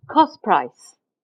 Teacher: you losing the T and the P become blurred into P you don't hear the T distinctly